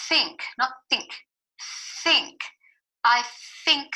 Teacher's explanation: letting off air out first over your tongue before you move to the next sound